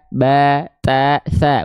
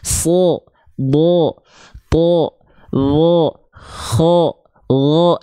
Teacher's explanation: yang tebal itu ketika dia berharakat fathah bunyinya condong bukan pada vokal a ba ta tsa bukan vokal A tapi pada vokal o